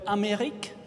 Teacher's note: In the word Amérique, the final E is not pronounced. It's a mute or silent E.